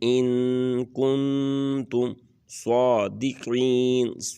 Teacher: یہاں پر ان اور کن کے اوپر دونوں کے اوپر اخفا کریں گے، تھوڑا سا کھینچ کے پڑھیں گے ، ان کنتم صادقین، سین اور سواد میں فرق کرنا ہے،